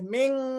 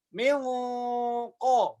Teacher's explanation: Jangan ming, jangan tipis, tapi langsung milqo karena siap-siapnya langsung qaf. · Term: tafkhimul gunah